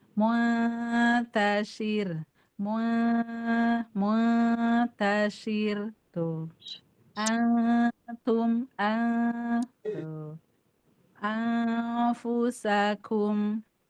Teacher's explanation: ikhfa itu bunyi nunnya itu sudah hilang ya. Jangan sampai ikhfa nunnya masih ada.